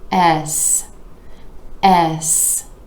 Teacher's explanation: this letter name starts out with that E vowel sound where you're dropping the jaw just a bit and moving into the S consonant